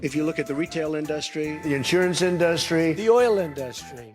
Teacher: And the second syllable is the schwa, in duh. But for some reason, Trump puts the stress on the schwa, which never happens in English.